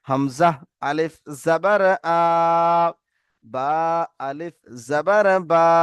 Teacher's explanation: আলিফ মাদ্দাকে এক আলিফ পরিমাণ টান দিয়ে পড়তে হয়।